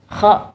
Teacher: Qaf, ya, qaf kan di ujung lidah. Kalau kho masih di tenggorokan tapi di paling atas